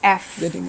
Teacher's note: pelafalan huruf F itu eh bibir bawah ketemu dengan gigi atas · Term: labio dental